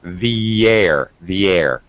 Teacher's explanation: I reduce pronunciation and join it very closely because it's a function word and it's actually not important when it comes to really understanding context.